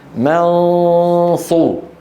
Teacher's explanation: إذا هيأت فمي على الصاد لابد أن يكون صوت الغنة مفخم. من، وليس منص، لأنني بعده سأنتقل إلى صاد. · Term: إخفاء النون الساكنة